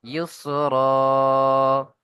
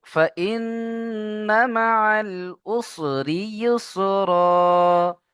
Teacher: আয়াতের শেষে যখন দু জেবার আসে সেখানে এক জেবার কি গণ্য করে একালিফ টান দিয়ে পড়তে হয়